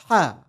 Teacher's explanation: make sure to pronounce this letter from the middle of your throat and not from the bottom or from the upper part